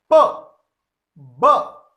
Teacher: Okay, these are 6 plosive sounds, and you can feel that when I pronounce these sounds, when I say these sounds, an explosion of air is clearly heard